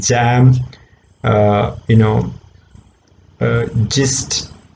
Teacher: Same way, j is also produced, but in the case of j, what's happening is, the air, sorry, it's a voiced sound. It's a voiced palato-alveolar sound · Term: j sound